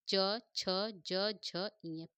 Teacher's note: च छ ज झ य इन पांचों का उच्चार स्थान क्या है दोस्तों तालू है